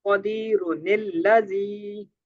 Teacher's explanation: حمزہ وصلیہ کو گرا کر تنوین کا جو نون ہے اس کو نکال کر نیچے زیر دے کر پڑھیں گے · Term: نون قطنی